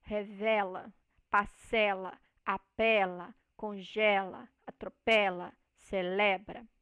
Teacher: no presente nós temos a vogal tônica né no caso a sílaba tônica com a vogal com som aberto